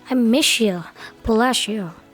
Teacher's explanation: ada bunyi S dan Y menjadi tebal sh